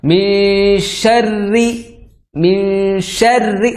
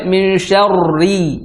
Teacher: ro bertasdid yang harakatnya kasrah ya rnya tasdid harakatnya kasrah Maka membunyikannya langsung ke tipisnya yang ke tipisnya contoh minyarri minarri langsung tipis jangan sampai minar